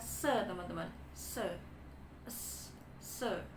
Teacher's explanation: Kenapa dia di alveolar ya karena lidah kita ditempatkan di alveolar teman-teman ujung lidah kita itu di alveolar kemudian Kenapa dia frikatif karena aliran udaranya itu · Dia adalah voiceless alveolar fricative teman-teman.